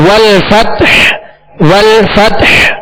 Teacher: آگے والفتح والفتح یعنی ہا پر ہم نے سانس توڑ دیا، آواز اور سانس توڑ دیا اور وقف کیا ہم نے ہا کو ساکن کرنے، لہذا ہا پر ہی اختتام ہوگا، ہا ساکنہ پر آواز اور سانس کا اختتام ہوگا. والفتح یعنی آخر میں ظاہر کریں گے، ہا ساکن ظاہر کریں گے.